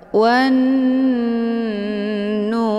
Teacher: wawnya dimasukkan ke dalam huruf nun atau dileburkan dengan cara ditekan dan ditahan lebih kurang 2 kali ketukan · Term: ghunnah musyaddadah